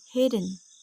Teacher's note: it is possible to have a syllable without a vowel like the word hidden there is no vowel between the two consonants the definition given